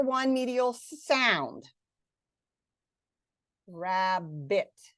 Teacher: we see 2 medial consonants, but we hear 1 medial sound